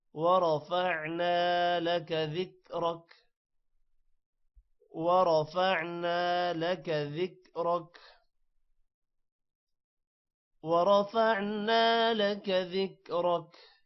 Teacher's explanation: ورفعنا، را موٹا ہوگا، نا کا الف لمبا ہوگا تھوڑا۔ لک ذکرک، ذکرک کا را بھی موٹا ہوگا۔